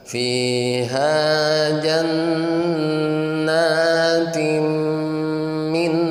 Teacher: Ya, tanwin menghadapi mim. Hukum tanwin dan nun mati menghadapi mim itu idgham. Idgham bigun. Nah, idgham bigun. Nah, ada gunnahnya. Berarti ditahan.